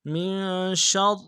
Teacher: اب چونکہ تشدید ہے، دو را ہے، پہلا را موٹا پڑھنا ہے، دوسرے کو باریک پڑھنا ہے